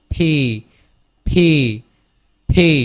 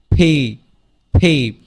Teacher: এটা ঠোঁট থেকে উচ্চারিত হয়, দুটি একসাথে লেগে যায়